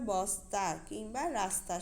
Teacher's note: একইভাবে বস্তা কিংবা রাস্তা শব্দের দন্ত স উচ্চারণের সময় জিভের সামনের অংশ উপরে পাটি দাঁতের মূলের খুব কাছাকাছি আসে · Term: দন্তমূলীয় দন্ত স